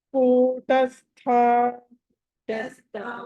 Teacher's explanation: తస్థ అక్కడ థ అన్నది మహాప్రాణం